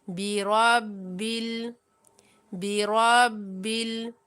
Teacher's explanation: را کو موٹا پڑھتے ہوئے کیونکہ را کے اوپر زبر ہے